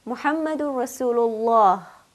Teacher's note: Allah carries Adama so therefore I will pronounce Allah with a heavy full mouth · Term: lam tafkhim